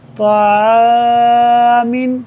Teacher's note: الف سے پہلے عین ہے، باریک حرف ہے اور اس کی وجہ سے الف کو بھی باریک پڑھا جائے گا